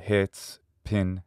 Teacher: this vowel is a near close or near high and a near front unrounded vowel. And because it doesn't fall exactly on the front axis, sometimes it's called a lax vowel, as opposed to the ones that are on the front axis, which are sometimes thought of as tense vowels in English. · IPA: ɪ